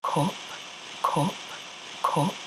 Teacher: North of that line strut words, words like cup, under, mother, love, son are going to have a vowel sound something like ooh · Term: strut vowel